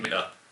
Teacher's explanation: If you pronounce it Minter, I got really annoyed. So if you had to do the glottal stop and make it Minter